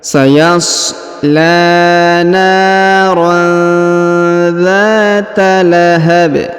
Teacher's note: huruf tanwin an bertemu dengan huruf dza maka didengungkan dan disamarkan sedangkan Alif yang di depannya tidak dibaca atau tidak dianggap sayashar